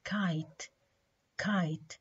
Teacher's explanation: during the articulation of ka the back of the tongue makes a firm contact with the soft palate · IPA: /k/